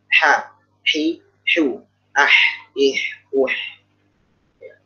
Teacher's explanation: ini ha di tengah tenggorokan